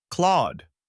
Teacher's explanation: Now shape the vowel as aw, the same sound you hear in words like law or saw. Let your jaw relax slightly and round your lips a bit to get that open aw. Finish with a soft, brief D.